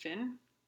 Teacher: where you have th produced as f in some Cockney accents. So like English thin would be pronounced fin.